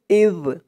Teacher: জালের আওয়াজটা একদম নরম পাতলা হবে, জিহ্বার মাথা উপরের দাঁতের মাথার সাথে লাগবে এই জালের উচ্চারণটা করার সময়